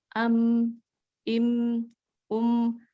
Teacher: Dan huruf yang mim dan nun, walaupun dia tidak bertasdid, tetapi dia ada gunah. Jadi ada ditahan dulu untuk dengungnya.